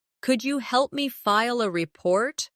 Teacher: Could you becomes could ya in natural speech.